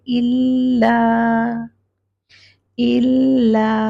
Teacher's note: लाम को तशदीद है तो उसको होल्ड करेंगे